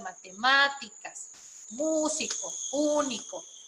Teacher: las esdrújulas es la antepenúltima